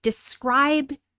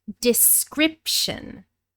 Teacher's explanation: So the verb describe becomes the noun description. Describe with a long I, description with a short I in the stressed syllable.